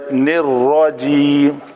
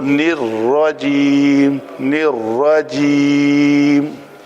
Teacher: را کہتے ہوئے کہیں واؤ تھوڑی سی 10% 20% وہ کچھ مشابہت اس کی آ جاتی ہے